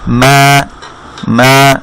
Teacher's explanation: তার বামে খালি আলিফ থাকাতে এটা হবে এক আলিফ মাদ